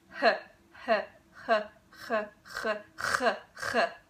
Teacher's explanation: if you move your tongue upwards, the back of your tongue upwards toward the soft palate, you can create that ch sound,